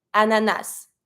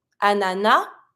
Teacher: some people tend to pronounce the final s some people don't